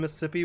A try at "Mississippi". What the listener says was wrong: No, it's Mississippi. There's more syllables in there.